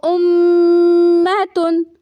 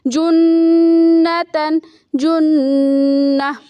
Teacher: آواز کو ناک میں لے جا کے ایک الف برابر ٹھہرائیں گے، اسے کہتے ہیں غنہ اور اسے کہتے ہیں نیزل ساؤنڈ۔